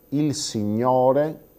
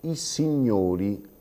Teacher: il signore con la o aperta i signori con la o chiusa · perché chiudiamo in automatico la vocale accentata perché nella sillaba successiva ci ritroviamo il morfema i la vocale i che il morfema del plurale nella lingua italiana · morfema del plurale nella lingua italiana che è una vocale chiusa la chiusura della i mi porta in automatico a pronunciare chiusa anche la vocale accentata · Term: la metaforesi, metafonesi